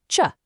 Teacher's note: Take a voiceless plosive stop, the T, add the voiceless fricative, sh sound, and you get ch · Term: affricates